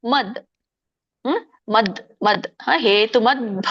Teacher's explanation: ಕೆ ಭವತ್ತ ಇದೆ ಆ ದ ಕೆ ಭವತ್ತ ಮೇಲೆ ಹೆಚ್ಚಿಗೆ ಒತ್ತು ಕೊಡೋಕಿಂತ ಹಿಂದಿನ ಪದ ಅಂದ್ರೆ ಮ ಕ್ಕೆ ಹೆಚ್ಚಿಗೆ ನಾವು ಒತ್ತು ಕೊಡಬೇಕು ಅದಕ್ಕೆ ಆಘಾತ ಅಂತ ಕರೀತಾರೆ ಮದ್ ಹ ಮದ್ ಮದ್ ಹೇತುಮದ್ಭ ಆಮೇಲೆ ಭ ಹೇಳಬೇಕು ಹೇತುಮದ್ಭ ಮದ್ಭಿ ಭಿ